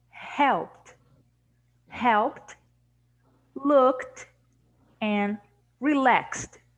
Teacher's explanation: we don't have a vowel sound we have all only the t · we have a T sound, or as we say in the phonetics, t, because we don't have a vowel sound